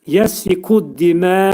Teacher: Burada bir ləmdən qabaq, dəldən qabaq ləm var idi. Şəmsiyə samiti olduğuna görə dəl, ləm sükunla çevrilir dəl hərfinə.